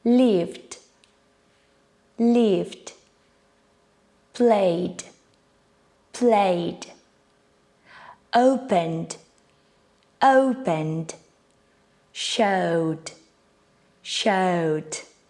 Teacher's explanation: the last sound before the ed ending is a voiced sound. It vibrates in your throat.